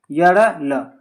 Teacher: यह का उच्चारण स्थान तालु, र का उच्चारण स्थान मूर्धा, एंड अगर ल पूछ लिया जाए तो ल का हो जाता है दंत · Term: अंतस्थ व्यंजन